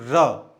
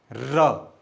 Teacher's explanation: जब र का हम उच्चारण करते हैं ना, र, तो मुंह के अंदर कुछ वाइब्रेशन पैदा होता है ना, कंपन पैदा होता है, तो इसीलिए इस र को प्रकंपित भी कहते हैं।